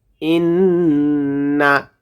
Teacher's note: এখানে গুণনা করব কারণ নুনের উপরে তাশদীদ এসেছে